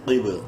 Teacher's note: سے نہیں ہے اس لیے اخفا کریں گے، قوف بازیر قب، قوف کو منہ بھر کے پڑھنا ہے، با میں قلقلہ کرنا ہے